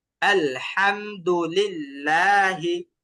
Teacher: লিল্লাহি এখানে কিন্তু এক আলিফ টান আপনি লিল্লাহ এভাবে যদি টেনে যান ওটা দুই আলিফের জায়গায় চলে যাবে